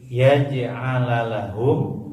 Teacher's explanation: Yuridullahu alla yaj'ala lahum qalqalah ya, ada jim ini salah satu huruf qalqalah ya. Jadi mantul lagi.